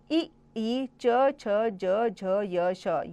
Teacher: ये तालु से बोले जाते हैं। इन्हें तालव्य कहा जाता है।